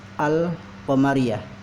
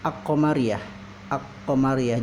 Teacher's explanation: Jika alif lam qamariyah itu, jika qamariyahnya kita pakai alif lam, itu disebut al qamariyah. Jadi alif lamnya dibaca, tidak bisa disebut dengan ak-qamariyah.